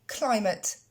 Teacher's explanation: L'accent tonique tombe sur la première syllabe, cly.